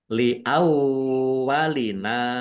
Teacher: langsung masuk ke huruf lam tetapi tidak mendengung tetapi dibaca dobel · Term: idgham bila ghunah